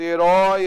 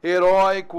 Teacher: herói é o O aberto, heróico, O aberto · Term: ditongo aberto